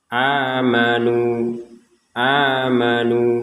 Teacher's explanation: dengan NU di sini sama-sama dua Har dua harakat amanu amanu a nu ini menjadi dua harakat sama-sama panjangnya dua harakat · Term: Mad thiin